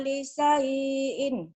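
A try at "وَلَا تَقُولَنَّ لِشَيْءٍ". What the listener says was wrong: lisyai'nya pendek. Lisyai'in. Shin. Li syai. Shin. Li syai'in. Kan nggak ada mad yang panjang. Shin.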